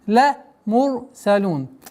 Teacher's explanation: Ра твердое произношение. При остановке уходим в сукун. Долгота огласовки дамма в размере двух огласовок.